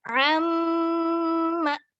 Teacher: Kalau ain keluarnya dari tenggorokan bagian tengah. Amma. Langsung bertemu mim bertasydid.